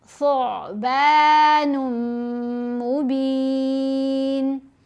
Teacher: سا کو آئین سے ملانا ہے، یہاں نہیں جھٹکا دینا، آئین کی آواز لہر کی طرح گلے سے آئے گی